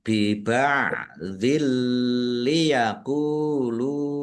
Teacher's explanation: Kasrah tanwin bertemu dengan huruf lam. Bacaan idgham bila ghunah. Masuk dengan tidak mendengung. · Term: idgham bila gunnah